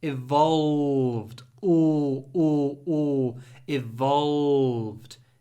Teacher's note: try to use dark L which is uh we pronounce it with the tip of our tongue behind our bottom teeth and the back of our tongue is raised